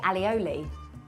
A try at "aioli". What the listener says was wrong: Again, wrong. Aioli. There's no double L.